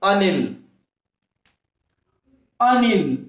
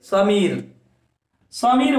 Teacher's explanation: समीर भन्दाखेरि मात्रा फेरि अलिकति डबल गयो, अलिकति लामो गयो, त्यही कारणले गर्दाखेरि समीर दीर्घ भयो · अनिल भन्दाखेरि इकारको मात्रा थोरै उच्चारण भएको छ, त्यसैले अनिलमा हुन्छ ह्रस्व